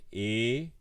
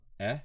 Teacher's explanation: the letter e uh has a closed version e and an open version e